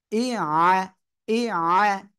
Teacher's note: আইনটা গলাটা চেপে পড়তে হবে।